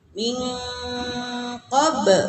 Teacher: Jadi min itu dibacanya agak-agak lama, ya, didengungkan samar. Qob likum qol qola. · Min qoblikum ihfa, ya. Jadi kalau nun mati menghadapi qob, dibacanya eng, ya.